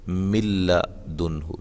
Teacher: نون بالکل نہیں، نون کی آواز نہیں آئے گی۔ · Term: ادغام بلا غنہ